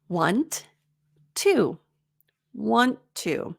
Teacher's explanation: You're only pronouncing that T once, but it takes a while for it to sound smooth and take the pause away.